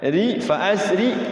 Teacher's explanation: Ri-nya dibaca ri, fa asri nyengir, tarqiq tipis ya